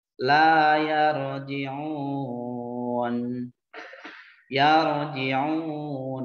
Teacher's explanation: ro-nya harus tafhim. Ro-nya harus agak tebal karena sukun awalnya fathah ya.